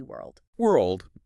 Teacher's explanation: you have to curl that R deep in your mouth and then immediately land your tongue on the teeth for the L and the D